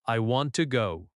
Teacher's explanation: Stress want and go. Let want and go carry the energy. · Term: stress patterns